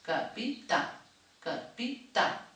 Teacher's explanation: I les que sonen més fluixes són les síl·labes àtones. Si jo llegeixo capità, hi ha una que pronuncio una mica més forta, que és l'última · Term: síl·laba tònica